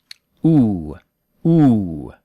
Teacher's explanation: English vowel U is further back.